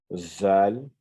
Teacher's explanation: Donc, zal, c'est également pareil que le sa. Il faut mettre le bout de la langue, venir frôler les incisives supérieures.